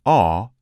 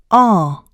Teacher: The /ɔ/ is lax, so it is short in duration.